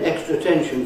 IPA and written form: ˈekstrə əˋtenʃn (extra attention)